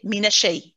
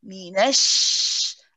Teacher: we say it's a rahawa letter it means you have to stay on it a little bit